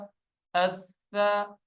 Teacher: سا پہ سیٹی کی آواز نہیں آتی. سا نرم حروف میں سے ہے، نرم کر کے پڑھا جاتا ہے